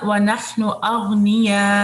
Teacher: مد متصل، اور پھر اس کے بعد آپ کا حمزہ جو ہے وہ واضح ہونا چاہیے